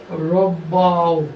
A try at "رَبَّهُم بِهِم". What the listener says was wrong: এটা মাদ হয়ে যাচ্ছে, গুণনা হচ্ছে না। রব্বাহুম বিহিম। গুণনাটা হবে মিমের উপরে। মিম সাকিন গুণনা।